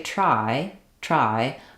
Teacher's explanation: trying to do the retroflex so when I say try try I don't think I'm really using much of a retroflex r in any of those contexts